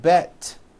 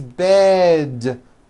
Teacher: Bed has a voiced D ending. It's not bet with an unvoiced T, it's bed with a voiced D.